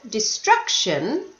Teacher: Destruction, the stress was on the second syllable.